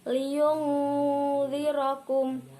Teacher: Liyundzirakum, nun sukun bertemu dengan huruf dal, yaitu ikhfa hakiki, dibaca mendengung